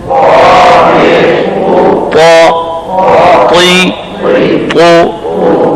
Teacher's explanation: تو ہم نے اعتراض ختم کر دیا کہ طا کے اندر اطباق کی صفت ہے اور استعلاء کی بھی صفت ہے. تنبیہ یہ ہے کہ طا کی ادائیگی میں ہون گول نہ ہوں